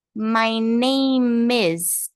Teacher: eu vou juntar o e do name com o is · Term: linkar